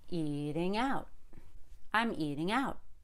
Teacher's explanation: i stress eat and i stress out but i don't stress the ing